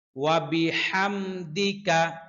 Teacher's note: হা কণ্ঠনালীর মধ্যখান থেকে উচ্চারিত হয়